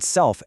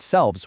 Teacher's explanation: the word self ending in that fortis f is actually shorter to say than the word selves, which ends in the leanest v. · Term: prefortis clipping